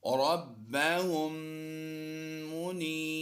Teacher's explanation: میم مشدد ہے، اس میم کو ہم نے پیچھے ملانا ہے